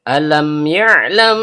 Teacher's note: Hal ini menghasilkan fatwa Izhar Shafawi. Bunyi sukun 'Mim' dibaca dengan jelas tanpa bunyi sengau.